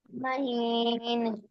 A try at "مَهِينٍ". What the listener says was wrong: مہین نون ساکن ہو گیا ہے، نون قلقلہ نہیں ہوگا، مہین.